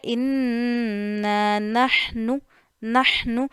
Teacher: ٹھیک ہے، تو یہ ہے ان نحنو. نحنو ہا کو گلے کے درمیان والے حصے سے ادا کرنا ہے